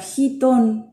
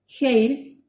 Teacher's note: el equivalente a nuestra jota y se articula de manera muy similar con el velo del paladar con hit podemos encontrar la palabra heaton por ejemplo que es